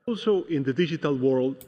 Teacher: I like how he did the flap T. He didn't use the true T. He said digital or digital, right?